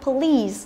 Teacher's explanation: trọng âm rơi vào âm tiết thứ hai, và thứ hai nữa là y này là y dài